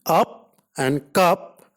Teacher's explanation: It is a means complete A. It is a central unrounded vowel just above open